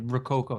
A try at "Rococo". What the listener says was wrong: think you have to roll the R when you say it.